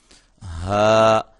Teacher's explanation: ہا اس کو ہم نے حلق کے انتہائی حصے سے ادا کرنا ہے جو کہ سینے کے قریب ہے